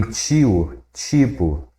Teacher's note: o T diante de I, a gente usa o alofone tchê